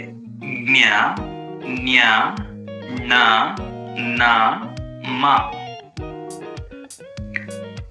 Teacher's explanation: ನಾಸಿಕ ಅಂದ್ರೆ ಮೂಗಿನ ಸಹಾಯದಿಂದ ಉಚ್ಚರಿಸುವುದರಿಂದ ಇವುಗಳನ್ನ ಅನುನಾಸಿಕಗಳು ಅಂತ ಕರೆಯಲಾಗುತ್ತದೆ